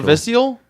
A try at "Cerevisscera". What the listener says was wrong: There is no L in there. It's Cerevisscera. You're saying an L that doesn't exist. Cerevisial? There's no L.